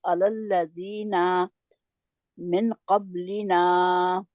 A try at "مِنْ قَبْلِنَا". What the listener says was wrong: मिन क़ब्लिना अलल्लज़ीन मिन क़ब्लिना। आप देखिए, ना को भी पहले ना को भी आपने हरकत वाला जो था उसको भी खींच दिया, तो दूसरे को तो खींचना ही था क्योंकि वो तो था ही मद लेटर, है ना।